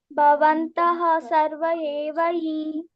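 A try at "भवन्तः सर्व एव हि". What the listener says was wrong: ಅಲ್ಲಿ ಭವಂತಹ ಬೇಕಾಗಿಲ್ಲ, ಲಾಸ್ಟ್ ಗೆ ಬಂದ್ರೆ ಮಾತ್ರ ಹ ಅಂತ ವಿಸರ್ಗ ಕೊಡ್ಬೇಕು. ಮಧ್ಯದಲ್ಲಿ ಬಂದ್ರೆ ಸಡನ್ಲಿ ನೆಕ್ಸ್ಟ್ ವರ್ಡ್ ಅನ್ನ ಸ್ಟಾರ್ಟ್ ಮಾಡ್ಬೇಕು. ಭವಂತಃ ಸರ್ವ ಏವ ಹಿ, ಆತರ.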